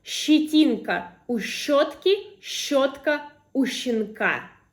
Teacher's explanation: here we will distinguish between sh, so the soft version, and ch.